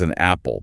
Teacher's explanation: Like if a speaker says an apple, the end sound moves over. Acoustically, they're actually saying maple.